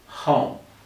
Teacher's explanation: look at my mouth when i say oh oh it's almost like an o and a w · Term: o sound